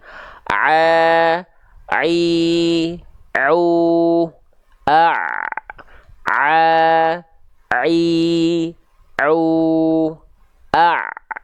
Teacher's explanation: Ain itu dilafalkan dari bagian tengah tenggorokan kita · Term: huruf Ain